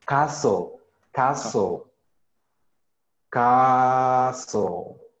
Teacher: in this case the letter T doesn't sound